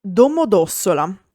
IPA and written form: ˌdomoˈdɔssola (Domodossola)